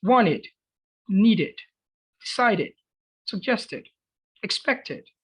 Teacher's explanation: No, it's wanted, needed, decided, suggested, expected. Todos aquellos verbos en los que terminen en T o D se pronuncian como it.